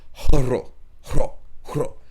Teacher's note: It's like the R has an RH sound, so it's like, or HR sounds like it's like hro, hro, hro. Like you have to hack and then roll the R, because it's not ra, it's hro.